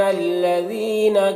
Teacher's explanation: لذین ذال کو باریک ادا کرتے ہیں، زینہ یہاں پر یا مدہ ہے، یا میں یا مدہ ہے، ایک الف کے برابر کھینچ کر پڑھیں گے۔